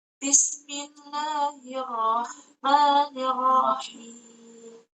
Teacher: di situ tuh rohnya tipis karena didahului oleh huruf kasrah hir